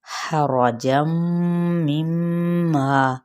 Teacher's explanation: रापुर हा वस्ते हल्क से, और यहाँ पे तनवीन ज़बर के बाद मीम मुतहरिक है तो इदगाम माअल गुन्ना, फिर आगे मीम मुशद्दद है तो गुन्ना करते हुए अलिफ मद्दा। · हरजम मिम्मा, रापुर हा वस्ते हल्क से, और यहाँ पे तनवीन ज़बर के बाद मीम मुतहरिक है तो इदगाम माअल गुन्ना